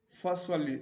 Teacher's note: سواد جو ہے یہ سواد یہ پر پڑھنا ہے، اس کو موٹا پڑھیں گے کیونکہ یہ حروف استعالیہ میں سے ہے ، اور آگے جو لام ہے اس کو باریک پڑھیں گے،